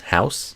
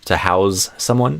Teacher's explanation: And there's similar patterns in some other words too, like house versus house. So the noun is with an S, house. And then the verb, which is a little less common but exists, to house someone, is with a Z sound.